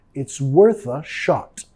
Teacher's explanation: It's worth a, vinculando el sonido schwa, it's worth a shot.